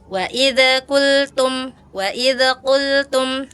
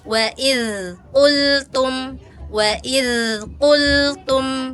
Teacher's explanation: Harusnya kalau dza sifatnya rakhawah, ngalir ya.